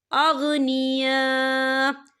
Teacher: ये मद जो है मद मुत्तसिल है, इसकी मिकदार जो है 4 हरकत के बराबर है, तो हम इसे 4 हरकत के बराबर खींच के पढ़ेंगे।